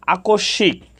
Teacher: দন্তস এর সাথে ম ফলা যুক্ত হওয়ার কারণে দন্তস এর উচ্চারণ সামান্য নাসিক্য হয়েছে